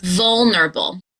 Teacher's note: There are four syllables and the stress will be on v. So, we're going to start with that V.